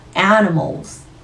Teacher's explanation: 모음 유지하신 상태로 Z, 유성음 넣어주셔야 되죠.